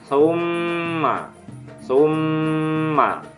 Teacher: pada huruf mim bertanda tasjid juga dibaca dengung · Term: gunnah